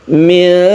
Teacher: nun bertemu dengan dal, kita sebut dengan ikhfa, artinya samar, membacanya didengungkan. Mi'adun, jadi kita tahan.